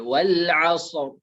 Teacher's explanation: Sebelum ro ada huruf mati yaitu shad. Dan sebelum huruf shad ada huruf berbaris fathah yaitu ain. Maka ro-nya tetap dibaca tebal. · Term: ro dibaca tebal